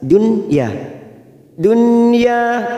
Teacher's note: nun sukun bertemu ya Idhar wajib atau Idhar mutlak kita baca jelas